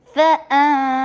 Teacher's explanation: اوپر رخاوا کیجیے، بحر، فا پھر فا میں پہلے ساؤنڈ کیجیے، حمزہ شدید، نون کے اوپر اخفا ، فَأَنْجَيْنَاكُمْ، کاف کے پر ضمہ، ہونٹوں کو گول کیجیے، میم